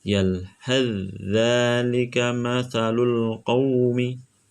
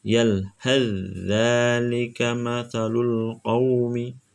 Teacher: Langsung dimasukkan dan makhrajnya posisi langsung di huruf za.